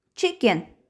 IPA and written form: ˈtʃɪkɪn (chicken)